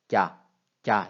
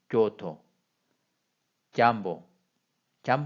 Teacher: 혀의 위치도 혀가 입천장하고 닿는 위치도 아주 뒤쪽이고 공기가 안으로 빨려 들어가면서 나는 야가 되는 거죠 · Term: 내파음